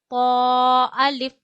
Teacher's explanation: पौ आप अदा करते हैं ऊपर के दांतों की जड़ों पे जबान लगा के और हमेशा इसे भी मोटा अदा किया जाता है ताकि ता और पौ में फर्क हो सके।